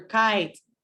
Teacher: has a puff of air so it's voiceless has my tongue touching that region that's behind my teeth uh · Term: velar